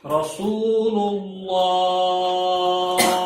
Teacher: اللہ کا لام موٹا ہوگا اور کھڑی زبر بھی ہے، ایک الف کے برابر کھینچا بھی جائے گا، اور وقت کی صورت میں 3 سیکنڈ لمبا ہوگا، کیونکہ ہاں جب ساکن ہوگا تو وہ الگ مد ہے، وہ بھی آپ کو بعد میں بتائیں گے، لیکن 3 سے 5 سیکنڈ اس کو لمبا کر کے چھوڑنا ہے.